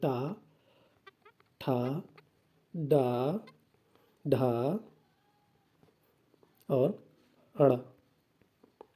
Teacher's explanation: टा वर्ण के सभी वर्णों का उच्चारण स्थल मूर्धा होता है